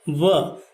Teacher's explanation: उ और अ ये मिल करके व बनता है, परंतु जब इसका उच्चारण करते हैं तो होठों से निकलता है और नीचे वाला होठ जो है वह हमारे ऊपर के दांत से स्पर्श होता है